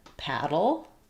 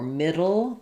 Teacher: The dull is basically just lifting the tongue up briefly and having the voice on for that flap and then going to my dark L.